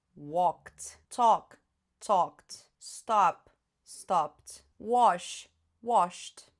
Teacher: Esse ed vai vir com som de T. Por quê? Porque antes do ed eu tinha um som desvozeado.